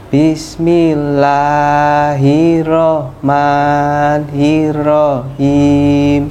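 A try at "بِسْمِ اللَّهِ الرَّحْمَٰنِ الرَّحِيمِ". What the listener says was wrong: Ya, itu tadi sudah hafal, tapi R-nya belum double. R-nya double bergetar.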